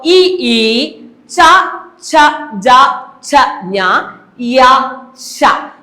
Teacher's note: ഇത്രയും അക്ഷരങ്ങൾ താലുവിലാണ് അതായത് അണ്ണാക്കിൽ മുട്ടിച്ചുകൊണ്ടാണ് ഉച്ചരിക്കുന്നത് അപ്പോൾ നാക്കിനെ താലുവിൽ മുട്ടിച്ചുകൊണ്ട് മാത്രമേ ഈ അക്ഷരങ്ങളെ ഉച്ചരിക്കാൻ ആവൂ അതുകൊണ്ടാണ് അവയെ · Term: താലവ്യം